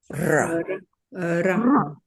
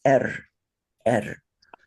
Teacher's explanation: the consonant is rolled in Sanskrit pretty heavily, like a Spanish or a Russian ra.